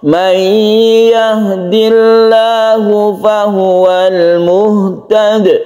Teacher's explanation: Kalau kita berhenti berarti dia disukun dal yang menjadi qalqalah kubra.